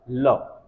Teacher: दोनों तरफ आपके गालों की तरफ को हवा निकलती है जीभ के बगल से, इसीलिए इसको बोलते हैं पार्श्विक व्यंजन।